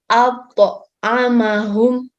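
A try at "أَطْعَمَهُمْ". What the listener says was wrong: Pantulannya tidak lambat, cepat. At'amahum.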